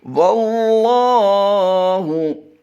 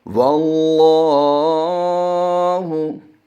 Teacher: इस पर जो ज़बर है उसकी वजह से हम इस लाम को भी पुर पढ़ेंगे